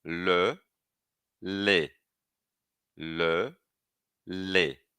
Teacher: A diferença é justamente o arredondamento dos lábios.